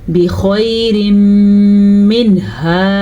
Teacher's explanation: نون ساکن کے بعد ہا حروف حلقی میں سے ہے تو نون ساکن کو ہم ظاہر کر کے پڑھیں گے، بغیر غنہ کے پڑھیں گے · تنوین کے بعد اگر یا میم واو نون ان چاروں میں سے کوئی سا بھی ایک حرف آ جائے تو ان دونوں کو آپس میں ملانے کے ساتھ ساتھ غنّہ بھی کرتے ہیں